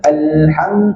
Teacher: masa baca Alham, al tu biar lama sikit, biar hidup.